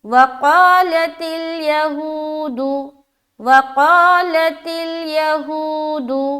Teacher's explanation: قا میں کھینچ رہے اور ہو میں کھینچ رہے، باقی کہیں پر نہیں کھینچائے گا · واو ساکن اس سے پہلے پیش آ گیا، لہٰذا ایک الف کے مقدار کے باقدر کھینچنا ہے اور کھینچتے ہوئے ادا کرنا ہے۔ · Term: واو مدہ